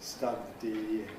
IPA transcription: ˈstʌdi